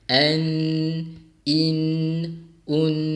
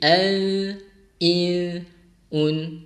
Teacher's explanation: Daripada hujung lidah kita letakkan di langit-langit hadapan, maka kali ini hujung lidah tergantung. Dia nak pergi ke langit-langit depan tapi dia tak sampai, dia gantung. Jadi daripada an, in, un jadi al, il, un. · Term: ikhfa hakiki